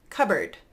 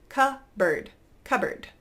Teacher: notice I'm just skipping right over that P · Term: silent P